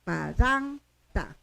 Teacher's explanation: La segunda sílaba es cerrada, por lo tanto jala el acento y se pronuncia con fuerza en la segunda sílaba.